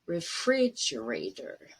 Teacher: fridge is stressed. It's going to be high, a little bit longer and louder.